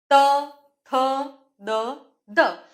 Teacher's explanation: હવે આ ત, થ, દ, ધ એ ધ્વનિના ઉચ્ચારણ સમયે જીભ ક્યાં અડે છે? તો આ જીભનો જે આગળનો ભાગ છે એ અહીંયા જે દાંતનું ઉપરનું પેઢું છે એ દાંતના ઉપરના પેઢાને સ્પર્શ કરે છે